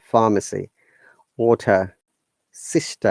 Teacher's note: so no R sound in British English